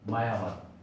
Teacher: দ্বিস্বর বা যৌগিক স্বর না হয়ে অন্তস্থ অয়ের মতো উচ্চারণ হচ্ছে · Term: অশ্রুতি